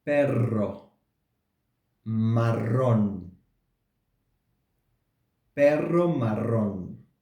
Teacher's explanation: you will see that the tongue vibrates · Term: r sounds